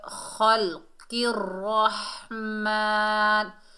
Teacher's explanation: را کو 2 مرتبہ پڑھیں گے کیونکہ را مشدد ہے اور موٹا بھی پڑھیں گے. را کو ہا سے ملائیں گے، ہا کو حلق کے درمیان سے ادا کریں گے.